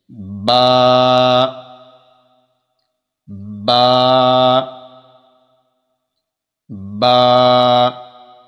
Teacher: با جو ہے یہ اندر والے حصے سے ادا ہوتا ہے جو تر حصہ ہوتا ہے۔ دونوں ہونٹوں کے تر حصہ کو جب آپس میں ملائیں گے تب با جو ہے وہ صحیح طرح ادا ہوگا